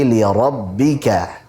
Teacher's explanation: li rabbika jangan sampai li rabb, jangan sampai masuk hidung.